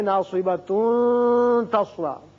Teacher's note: یہاں جب آپ ملانا چاہیں ناصبہ تصلا تو پھر اخفا کریں گے